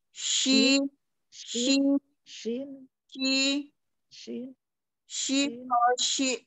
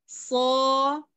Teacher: kalau shin pengucapannya dia makhrajnya itu dia cara pengucapannya itu dia tengah lidah bertemu dengan langit-langit tengah atas gitu. Jadi shi, shi, dia mengumpul dulu.